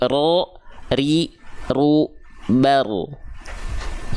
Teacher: dia bergetar tapi enggak berlebihan tapi bukan berarti juga hilang getarannya · walaupun dia getarannya sedikit, tapi tetap tegas, lugas, dan jelas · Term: takrir